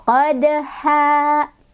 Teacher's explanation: Qad ha di sini ada mad iwad karena ada fathah tanwin yang diwaqafkan. Cara bacanya fathah tanwinnya diganti menjadi fathah saja dan dibaca panjang 2 harokat.